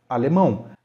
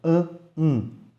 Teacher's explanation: na palavra alemão a gente percebe dois sons vocálicos no final ã um e na mesma sílaba a gente não pronuncia alemão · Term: ditongo